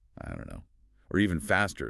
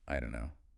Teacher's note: The T is gone, the vowel might be different, and don't and no link seamlessly together. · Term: elision